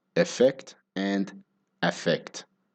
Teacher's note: in both words the stress is on the second syllable so the unstressed syllable at the start of each word it sounds pretty similar